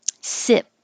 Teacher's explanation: So the vowel is I, not too high E, but I.